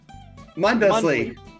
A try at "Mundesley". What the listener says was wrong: It's Munsley. It is Munsley. the D is silent.